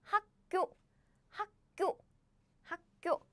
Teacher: So, yes, basically this pronunciation happened because the consonant in the Batchim position and the first consonant of the next syllable are 다른, same. So the first consonant of the following syllable is pronounced as a double consonant.